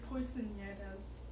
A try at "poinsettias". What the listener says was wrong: poinsettias. You said poisonieras. You sound like quinceañera, like you were trying to say a Okay, we're gonna work on our enunciation and pronunciation. I think they're called poinsettias. I think that's how you pronounce it.